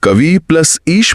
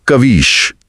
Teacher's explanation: जैसे कवि प्लस ईश में कवि की छोटी ई और ईश की बड़ी ई मिली और नतीजा हुआ बड़ी ई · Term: दीर्घ संधि